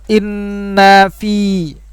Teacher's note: ini ada nun syiddah atau nun yang ada tasydidnya. Ini hukumnya adalah gunnah.